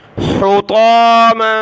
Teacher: طا کو موٹا کیا، میم کے اوپر دو زبر کی تنوین ہے، ناک میں آواز پیدا ہوگی. ہا کو گلے سے نکالیں.